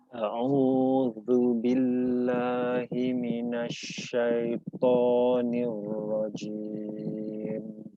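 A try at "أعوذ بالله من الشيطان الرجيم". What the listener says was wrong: Masih kurang naik lidahnya. Dan memang dia paling tebal ya. Dia posisi paling tebal karena di situ huruf isti'la kemudian diikuti alif.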